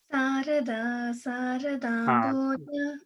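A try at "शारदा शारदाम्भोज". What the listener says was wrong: No, it's not Sarada. You have to say Sha. Sharada, Sharadambhoja.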